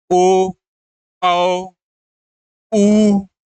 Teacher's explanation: वो कहीं ना कहीं पस से यानी कि जीभ के अंतिम भाग से आ रहा है · इसी प्रकार जब पश्च स्वर के बारे में बात करते हैं, ओ, तो क्या आ रहा है, वो कहीं ना कहीं पश्च से यानी कि जीभ के अंतिम भाग से आ रहा है